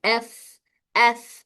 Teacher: सांस जारी रहने की वजह से हवा बाहर निकल रही है। · इसमें एयर फ्लो यानी सांस जारी रहता है। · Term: हमस, सिफात हमस